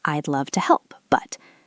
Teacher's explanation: But, listen to the intonation. My voice goes up on help and then pauses.